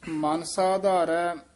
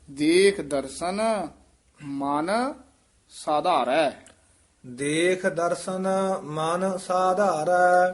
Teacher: ਮਨਸਾ ਨਹੀਂ ਕਹਿ ਦੇਣਾ ਥੋੜਾ ਜਿਹਾ ਨਖੇਰ ਕੇ ਪੜਨਾ